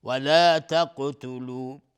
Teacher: قاف اینجا از حروف استعلاست و قلقله میخواد